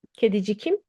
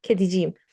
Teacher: Kedicikim, we don't say that. We said if we want to add a vowel to a K, K changes to yumuşak G